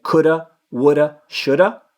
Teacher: that flick of the tongue there that you're doing when you say Coulda would a Shoulda that's the sound that the r makes a single r in Spanish